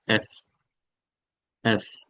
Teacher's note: উপরের দাত নিচের ঠোটে এসে বাচবে · এটা হবে উপরের আপনার দাঁতটা নিচের ঠোঁটে এসে বাজবে। এফ, উপরের দাঁত নিচের ঠোঁটে এসে বাজবে, নিচের ঠোঁটের উপরের অংশ, উপরের দাঁত দেখবেন এফ, উপরের দাঁত নিচের ঠোঁট এফ, এফ, একটা হালকা একটা সাউন্ড এফ, এফ।